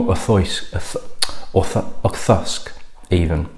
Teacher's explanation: It's less of the kr and more of a th sound.